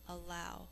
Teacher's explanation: In normal speech, we only hear one l sound, but as we say it for spelling and think to spell it, we hear the l twice, so we remember to get the double l in.